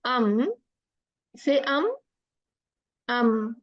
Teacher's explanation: it is a nasal sound coming from inner nose without any influence of tongue